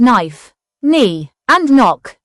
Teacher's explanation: The k is not pronounced, only the n is heard. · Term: silent k